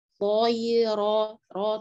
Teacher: Toyiro, ro tetap, ro dibaca tebal karena berkaitan dengan fathah.